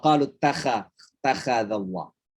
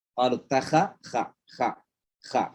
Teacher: Ini tenggorokan bagian atas. Kha. Kalau ain di tengah ya.